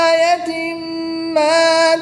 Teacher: تنوین کے بعد میم حرف یعملون میں سے ہے تو یہاں پر ادغام مع الغنہ ہوگا